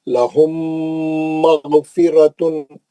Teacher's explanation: میم کے بعد میم آ گیا تو غنہ کرنا